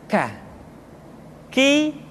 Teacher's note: diucapkan dengan mengangkat pangkal lidah kita ke posisi di depan huruf qaf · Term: huruf k